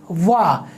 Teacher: आपका जो होठ है वो दांतों से टकराता है। वा, यानी व के उच्चारण में आपके दांत और ओष्ठ दोनों सक्रिय हो रहे हैं, इसलिए व आपका दंतोष्ठ वर्ण है।